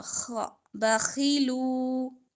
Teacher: خا ہمارا ادنا حلق سے ادا ہوا